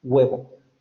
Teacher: la U también se puede realizar como una semiconsonante